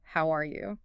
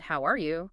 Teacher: saying it with a gentle rise in pitch towards the end, "How are you?" friendly rising tone generally sounds warmer, more open, more polite in many contexts.